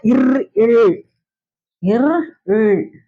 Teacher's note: மேல்வாயில நாக்குடைய நுனி வருடுவதால் பிறக்கின்றது. தொடல வருடுவதால் பிறக்கின்றது.